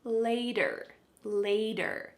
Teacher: There's a T, but it sounds like a D?